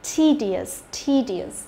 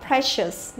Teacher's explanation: E và đằng sau đó cũng cộng với cả io thì e cũng đọc là i dài